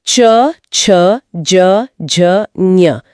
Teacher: तालव्य व्यंजन यानी च वर्ग च, छ, ज, झ, ञ तालु यानी गले के ठीक ऊपर के हिस्से से उच्चारित होते हैं।